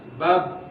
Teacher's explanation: Kemudian sifat yang lain adalah dia termasuk huruf dengan sifat syiddah, ya, bab, ya, dia berhenti, makhrajnya tertutup ketika huruf ini dilafalkan. Bab, ya, kuat, syiddah itu kuat, bab.